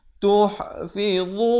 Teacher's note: Dhu hujung lidah macam huruf zal juga. Cuma dia bunyinya tebal. Tuhfidhu min.